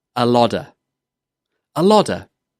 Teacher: It's difficult to say a lot of as 3 separate words when you're speaking quickly, so we join them together and it becomes a lodder. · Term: contraction